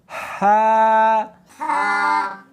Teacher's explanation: اس کو حلق میں سے نکالنا ہے، سینے میں سے نہیں نکالنا